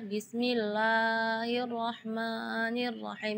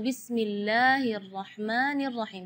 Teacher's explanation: Berlebihan dari segi madnya. Jadi bismillah itu kepanjangan.